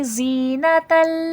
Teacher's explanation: زا حرف صفیر ہے سختی سیٹھی کے ساتھ پڑھا جائے گا